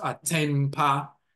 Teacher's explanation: If you see it, attain pa, but when pa means good and so forth, but attain pa, when you combine them together, the N becomes an M sound because the N next to the P